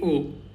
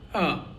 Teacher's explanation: So O has two sounds in Russian alphabet. The first one is obviously o but sometimes it's also read as uh not proper a but uh like unstressed a